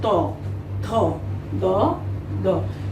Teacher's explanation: এই বর্ণগুলো উচ্চারণের সময় জিহ্বা দাঁতের সম্পূর্ণ অংশকে স্পর্শ করে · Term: দন্তবর্ণ